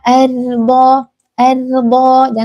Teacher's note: Dalam kata ar ini rnya tebal